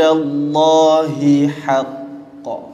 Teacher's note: Pertama ha tebal, kemudian haqqa tu ha nipis, maka kena nipiskan.